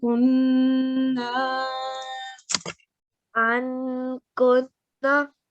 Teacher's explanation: So it's called partial nasal sound, and it's not a clear noon. It's slightly a sort of a noon sound.